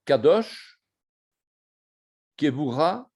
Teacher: C'est une consonne occlusive, uvulaire, sourde. Cette lettre est prononcée comme un Q provenant du fond de la gorge, en bloquant la luette.